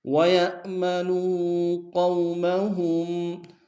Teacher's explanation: وَيَأْ میں جھٹکا دیں گے، نو میں واو مدہ ہے